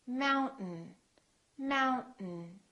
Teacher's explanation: Don't say mountain, don't release your tongue. Keep it up and just go directly to the N.